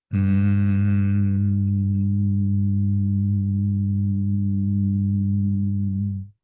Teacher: Quando você salta o ar, você faz um M grave, longo o seu M.